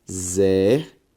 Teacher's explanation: A sílaba tônica, zer, ou seja, antepenúltima sílaba tônica, portanto, proparoxítona